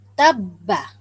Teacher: ba ni dia ada sifat qalqalah tetapi tidak nampak di sana. Kerana ada sabdu. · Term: idgham kamil